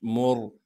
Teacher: پھر میم کو را ساکن سے ملانا ہے، میم را پیش مر۔ را ساکن سے پہلے پیش آنے کی وجہ سے را کو موٹا کر کے بھی پڑھیں گے